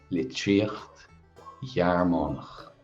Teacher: that's a feminine noun. So we're aspirating Gearmánach when it follows it.